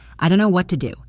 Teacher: The phrase, I don't know, is so common that it often gets mashed into, I don't know. The T in don't disappears, and the words just flow together